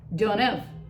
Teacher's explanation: instead of the A sound, sort of like in the word apple, we just turn it into a schwa.